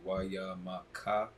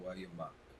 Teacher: at the end of the word, the vowel sound drops off, and you just get the consonantal value of it. So, whereas that would be wayamaka, all those characters, pronunciation wayamak.